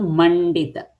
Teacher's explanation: Mandita, so mum dita. So, mum is anuswara followed by da which is the ta ta da dha na family. So, mandita. Na sound will come.